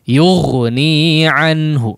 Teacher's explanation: Untuk huruf ghain tetap mengeluarkan aliran suara ya.